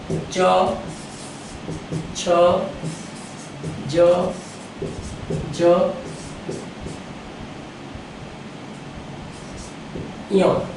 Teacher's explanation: તાળવા પાસેથી જે શબ્દ ઉચ્ચારાય છે તેને આપણે કહીએ છીએ તાલવ્ય